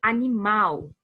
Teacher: o mal é a sílaba tônica e as outras são átonas